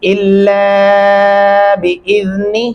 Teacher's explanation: لام کے اندر الف ہے لہذا ہم لام کو لمبا کریں گے